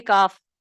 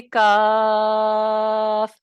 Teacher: اس میں مد لازم کی مقدار ہے طول، تو ہم اس لیے اس کے اوپر مد کی علامت بھی لگا دیں گے اور ہم پڑھیں گے کاف.